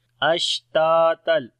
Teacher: شین میں صفت تفشی ہے اور ہمس بھی ہوگا